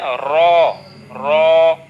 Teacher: জিহ্বার আগার সামান্য একটু উল্টা পিঠ তার বরাবর উপরে তালের সাথে লাগবে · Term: 10 নাম্বার মাখরাজ